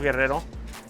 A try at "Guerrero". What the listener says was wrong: Can you please, you need to roll your R's, okay? Guerrero. Guerrero.